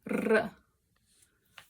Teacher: It's kind of like a D sound, but it's just like trilled. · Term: rolled R